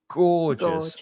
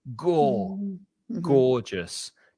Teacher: you stress that first syllable go gorgeous just two syllables gorgeous and i like that word